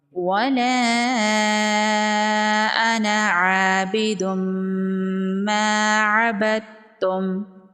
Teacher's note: وَلَا أَنَا، یہاں پر الف مدہ ہے، 1 الف کے برابر کھینچ کے پڑھیں گے۔ تنوین کے بعد حروف یرملون میں سے میم ہے، تو یہاں پر ادغام ہوگا مع الغنہ · یہاں پر بھی مد منفصل ہے، 3 سے 4 الف کے برابر کھینچ کے پڑھیں گے۔ یہاں پر جو ہے، یہاں پر انا نہیں پڑھیں گے، انا پڑھیں گے، یہاں پر اس الف کو نہیں پڑھنا۔